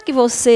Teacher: você é oxítona a sílaba tônica é a última